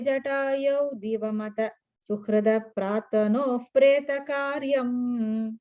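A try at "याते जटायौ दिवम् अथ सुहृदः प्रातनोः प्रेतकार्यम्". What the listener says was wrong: No, divam, after divam there is a pause. Yate jatayau divam.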